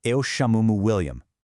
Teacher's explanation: Now, for my American speakers, pay really close attention to this pronunciation quirk. European Portuguese is notorious for squishing or reducing unstressed vowels. So that me at the end, it doesn't sound like the English word me. No way. It sounds much more like a soft, breathy m.